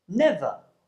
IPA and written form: 'nevə (never)